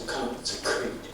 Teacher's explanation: The second K sound needs to be just as active as the first K sound, and you'll pick more definition that way.